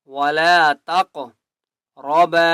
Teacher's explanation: قاف کو موٹا بھی کریں گے اور قلقلہ بھی کریں گے